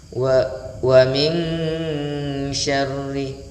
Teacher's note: nun sukun berjumpa dengan huruf shin ya, ini memiliki sifat at-tafashi ya, berhembus udara atau menyebar ya, atau meluasnya udara huruf shin di dalam mulut, maka pemirsa sahabat Al-Quran ya memposisikan hukum bacaan ini nun ketemu shin, maka akan dibaca ikhfa.